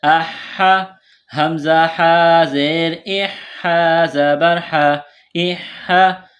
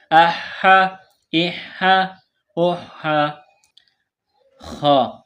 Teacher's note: گلے کے درمیان سے ہا کو نکالیں گے